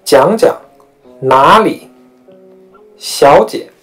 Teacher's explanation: 也就是说是二一四的三声加轻声变化成三五的二声加轻声